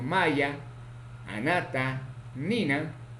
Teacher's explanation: Consonante na, nasal, alveolar, sonoro, ocurre en posición inicial, medial y final.